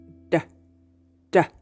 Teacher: line right behind your teeth d d as we've seen before it's voiced because the vocal cords vibrate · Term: soft r